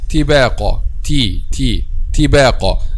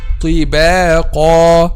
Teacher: one of the common mistakes when pronounced letter ta is making letter ta a light letter, and it's actually a heavy letter · if you say letter ta lightly, which means without raising the back of the tongue, it will be converted to ta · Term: light version of letter ta